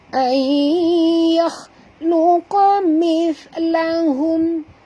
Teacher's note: Qa sini tebal, jangan baca luqa tapi luqa ya. Mithlahum, ni huruf sa perempuan, jadi kena sentil lidah menyebutnya. Keluarkan hujung lidah.